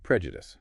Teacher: Stress on the first syllable. The second E is weak, often a schwa. The U is short.